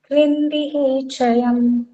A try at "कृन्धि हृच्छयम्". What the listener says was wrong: ही नहीं, ह्री। कृन्धि हृच्छयम। हृत शब्द है ना, हृत मतलब हृदय। तो चा को चरत होके च और ता को तो हृच्छयम ऐसा शब्द बना है।